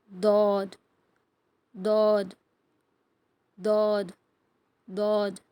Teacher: side அது மேல் கடவாய்ப்பா left இல்லைன்னா ரைட் ஏதாவது ஒரு சைடு மேல் மேல் கடவாய் பல்லோட வேர் இருக்குல்ல அதுல வச்சு உச்சரிக்கணும்